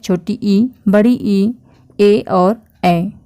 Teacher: का उसके आधार पर हम लोग देखेंगे तो उसमें आता है अग्र स्वर जो जीभ के अगले हिस्से से उच्चारित होते हैं बोले जाते हैं